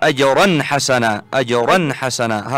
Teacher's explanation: التنوين عند الحاء لابد من الإظهار وليس أنت وضعتها كأنها إخفاء.